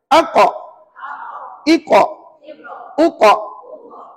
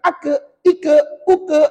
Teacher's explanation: pangkal lidah ditekan hampir ke anak tekak. Maknanya dekat sini, ni pangkal lidah kita, saat lagi kita tekan hampir ke anak tekak ke belakang lah. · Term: qaf